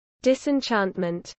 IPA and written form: ˌdɪsɪnˈtʃɑːntmənt (disenchantment)